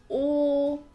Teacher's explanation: your mouth shape is a lot rounder like a like an egg